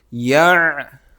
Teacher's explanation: لا یا عین سے ملے گا اور عین حلق سے نکالیں گے. یعلمون، اور جب یہاں پر سٹاپ کریں گے تو سیکنڈ لاسٹ نمبر پر واو ہے تو اس پر مد کی جائے گی.